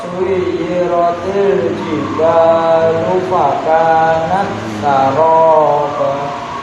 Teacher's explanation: ka-nya yang panjang, fa-nya pendek